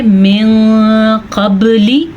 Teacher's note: इख़फ़ा का मतलब होता है नून की आवाज़ को छुपाना और इसको गुन्ना भी करते हैं